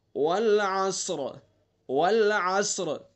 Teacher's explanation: کیونکہ صاد حروف مستعلیہ میں، صاد حروف مستعلیہ میں سے، اس لیے پر پڑھیں گے · ہم نے وقف کر دیا تو را ساکن، ساکن ما قبل متحرک والا قاعدہ ہو گیا، تو را کو پر پڑھیں گے